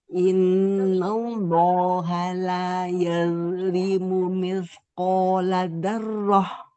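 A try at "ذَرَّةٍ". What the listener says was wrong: Nah, zarroh. Getarnya dikurangi, ro-nya ditebalkan. Zarroh. Di ini lidah, ujung lidahnya itu tempelkan ke gusi, Bu. Jadi getarnya itu 2 atau 3 getaran aja, dikit sekali.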